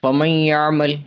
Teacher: پہلا نون ساکن کے بعد یا آ گیا، یا متحرک ہے، نون ساکن کو بھی یا میں ادغام کر دیا تو یہاں پہ ادغام مال غنہ ہوگا، غنہ بھی ہے